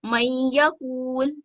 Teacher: नून साकिन के बाद या है लेकिन ये दूसरा लफ्ज है, इसलिए यहाँ पर इदगाम होगा